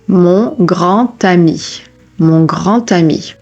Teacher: when the final consonant of a word is a D, you also do a te sound. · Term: liaison